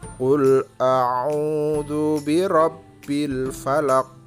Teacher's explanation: Qul a'u, au-nya itu dibaca panjang ya, itu namanya mad tabi'i. Ada wawu sukun didahului dengan dhamma, jadi itu mad tabi'i.